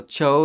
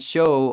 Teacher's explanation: you don't have a difference between the ch sound and the sh sound